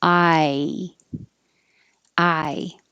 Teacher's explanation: this requires movement from low position ah and your tongue rises up to an e